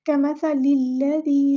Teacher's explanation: لام کو ہم لام کے ساتھ ملا دیں گے، حمزۃ الوصل ہمارا ڈراپ ہو جائے گا